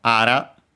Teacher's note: Actually, ara on its own, accented on the ra, on the final, on the last mora, the final mora